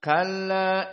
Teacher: mereka membaca dengan qasr maksudnya Hanya dua harakat